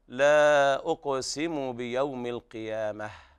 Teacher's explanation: وهنا تاء التأنيث يوقف عليها بالهاء لأنها تاء مربوطة، ففي حال الوصل تقرأ تاء وحال الوقف تقلب هاء، فيكون النطق هكذا لا أقسم بيوم القيامة، والهاء ضعيفة ولا داعي للمبالغة فيها.